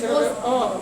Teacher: बिना ओठ के छुए हम लोग प नहीं बोल सकते हैं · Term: ओष्ठ